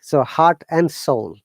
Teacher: when it is in between two words, it should be always n rather than and